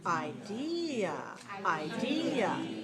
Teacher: the second syllable is long and clear